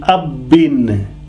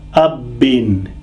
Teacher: this shadda sign is making ba pronounced twice